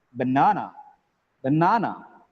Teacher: it has three syllables the second syllable is stressed